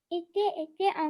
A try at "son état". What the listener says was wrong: Fais la liaison. Son état, il y a un N.